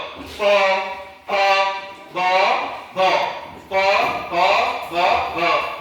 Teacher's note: ओठापासून ओठ एकमेकांना स्पर्श करून उच्चार होणारे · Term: ओष्ठ्य